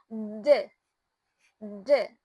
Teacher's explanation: the D sound is a voiced alveolar plosive. So meaning it is produced by obstructing airflow at the alveolar ridge with the tongue with vibrating the vocal cords. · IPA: /d/